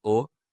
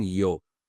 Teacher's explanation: They introduce the y sound to the vowel. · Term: umlauts